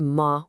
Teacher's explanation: The final sound is the vowel A, and the first tone is a high, flat pitch